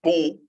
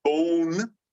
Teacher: Now, they don't actually say bone. They kind of lose that N, but they also nasalize the O, and so it sounds different. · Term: nasalization